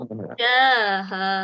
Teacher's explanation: Ghain dia suara dia terlepas tapi tak sampai lantun.